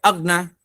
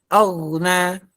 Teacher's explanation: Ada suara yang mengalir dulu, baru pindah ke huruf selanjutnya. Itu disebut rokhawah.